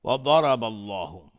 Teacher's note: ضاد از حروف استعلاء غلیظ تلفظ میشه. را حکمش استعلاء چون فتحه داره.